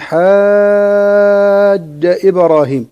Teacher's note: عند الوصل تمد بمقدار 6 حركات